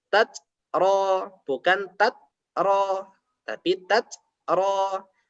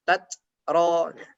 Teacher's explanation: Ada hembusan aliran nafas lewat mulut atau biasanya untuk memudahkan ada desisnya. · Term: hamas